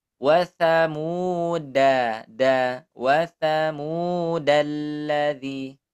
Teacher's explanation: Ini huruf dal. Jangan sampai dia ada suara Z-nya.